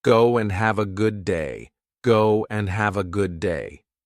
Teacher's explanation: And the D drops. So just to confuse you, we add a W and drop the duh. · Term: W sound